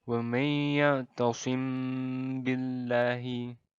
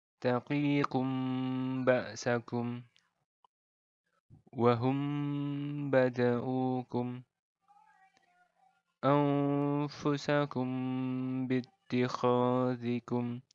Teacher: Jadi bagian mim bertemu ba-nya ini ditahan dulu, didengungkan sepanjang 2 harokat. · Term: ikhfa syafawi